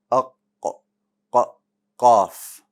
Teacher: the qaf is in the back of the tongue, right? Close to where the uvula is, so beneath it.